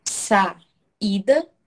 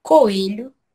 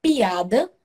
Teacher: Então, na hora que você vai fazer a separação da palavra, você vai se deparar com ele sozinho. É a junção de duas vogais pronunciadas separadamente. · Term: hiato